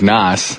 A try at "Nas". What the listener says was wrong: I love how you're saying his name. I can tell that you're from the younger generation because the younger people read his name the way it's spelled. It's actually pronounced Nas with like a Z sound. Nas.